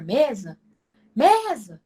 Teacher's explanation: Mesa, quando eu pronuncio a palavra mesa, o me, ele se torna mais forte que o za. Acreditem. Mesmo que o Z ele tenha um sonzinho assim forte, mas não. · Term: paroxítono